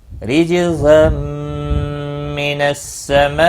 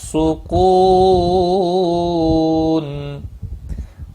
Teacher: را زیر کی وجہ سے باریک پڑھا جائے گا، جیم پر قلقلہ ہوگا۔ تنوین کے بعد حروف یرملون کا میم آیا، ادغام با گنہ ہوگا